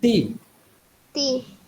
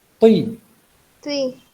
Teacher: ती बारीक आवाज है, तुई ये मोटी आवाज है